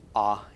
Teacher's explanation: the Komets actually makes more of a short o as in pops